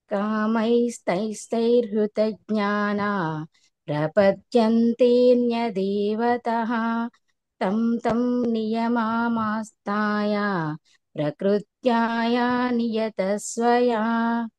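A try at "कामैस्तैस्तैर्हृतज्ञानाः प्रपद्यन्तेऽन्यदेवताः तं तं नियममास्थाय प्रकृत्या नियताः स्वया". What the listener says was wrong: Okay, కొన్ని దీర్ఘాల ప్లేస్లో మిస్ అవుతున్నారు, అదొకటానండి.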